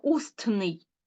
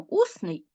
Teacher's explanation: А якщо ми утворюємо прикметник і додаємо суфікс н то звук т випадає Ми ж не кажемо устний Ми кажемо усний і пишемо усний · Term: спрощенням